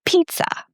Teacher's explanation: You see the z letter, actually two of them, and you think that it's pizza, but there is no z sound. It's p, like I need to pee, then t s and then the shwa at the end · It's P, like I need to pee, then T, S, and then the schwa at the end. So in the word pizza, the T and S give this very weird sound.